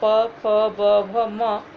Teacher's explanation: इनका उच्चारण दोनों होठों की सहायता से होता है, जैसे प, फ, ब, भ, म ओठों की सहायता से होते हैं इसलिए हम इन्हें ओष्ठ वर्ण कहते हैं।